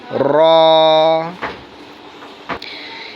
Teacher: জিহ্বার আগার পিঠ তার বরাবর উপরে তালুর সঙ্গে লাগাইয়া, অর্থাৎ জিহ্বার আগার উল্টা পিঠ, পিঠ যেটাকে এরকমের শব্দ হবে র র।